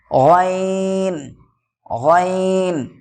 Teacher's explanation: হালাকের বা কণ্ঠনালীর শেষ ভাগ হইতে উচ্চারিত হয় গইন।